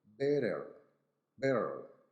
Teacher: The last one is the T sound. Now, in American, the T sound in this word takes an R sound. So in American, we're going to say better, better. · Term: flap T